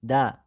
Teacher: ujung lidah bertemu pangkal gigi seri atas, tempat tumbuhnya gigi. Ini gigi kita, ini gusi, ini gigi serinya, ini tengah-tengahnya ya. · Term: huruf dal